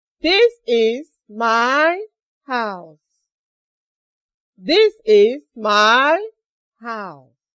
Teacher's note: You notice that at the end of the sentence, my voice went down. Remember, we are treating the falling tone. · And your voice goes down at the end of the statement you are making.